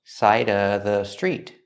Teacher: You can say side of the street, or you can eliminate the V sound in of, because it's before a consonant.